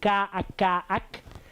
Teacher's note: The velar one, like the k, where you have the tongue that touches the palate deeper in the mouth